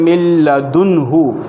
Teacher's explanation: نون کو ظاہر کرتے، اظہار کرتے، من لدنہ، غنہ نہیں کر رہے